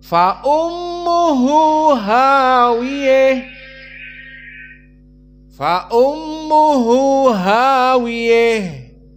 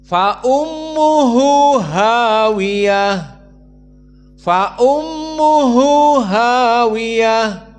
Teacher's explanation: idgham Fa ummuh hawiyah tidak ada seperti biasa dan yang kedua dibaca hawiyah dengan fathah tanpa Al imalah alkubro